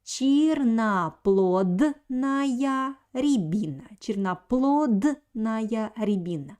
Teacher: I pronounce here D because D stands in front of N. N, this consonant is always voiced in Russian language. That's why the letter D doesn't lose its quality.